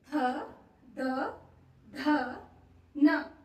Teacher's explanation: त थ द ध न जो हमारी जीभ है वो दांत को टच करती है अंदर की साइड को है ना ऊपर वाले दांत को टच करती है